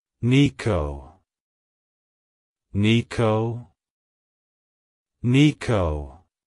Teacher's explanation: To pronounce it correctly, emphasize the first syllable N-E-E and then the second syllable K-O.